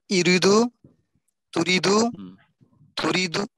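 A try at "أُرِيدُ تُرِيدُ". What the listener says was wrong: আচ্ছা মাদ দিয়ে পড়বেন, মাদ দিয়ে পড়বেন।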